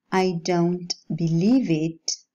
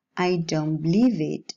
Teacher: when the alveolar sounds come into contact with the following bilabial one, the articulation changes from alveolar to bilabial. Why? To economize effort and to produce one single articulation for all sounds.